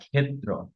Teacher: সেই ক এবং স দুটোকে একটু আলাদাভাবে সেপারেটলি উচ্চারণ করতে হয়।